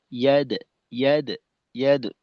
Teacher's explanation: দালের উচ্চারণটা যেন ইয়া দো উকার মুখী না হয়